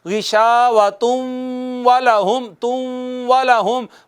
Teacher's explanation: नून तनवीन का वाओ में इदगाम हो जाएगा, इसी वजह से वाओ पर शद आई है।